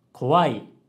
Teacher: Again, she's not able to pronounce each sound clearly.But she can produce the correct pitch pattern. Kowai has a low, high, low pitch pattern. And even though she's actually not pronouncing it correctly at all, but she gets the pitch pattern right.